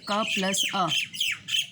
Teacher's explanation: क का उच्चारण करते हैं तो बाद में हमें अ की ध्वनि सुनाई देती है। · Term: ह्रस्व स्वर